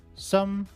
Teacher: some became sum. Again, the vowel sound became the neutral sound